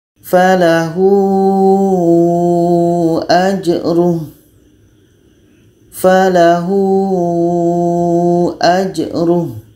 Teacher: Sama di sini pun ha dhamir ada hamzah. Jadi ini hukumnya maksilah tawilah. Panjangnya 4 sehingga 5 harkat. · Jadi kalau kita temukan ha dhamir setelahnya ada hamzah, maka kita baca 4 sehingga 5 harkat.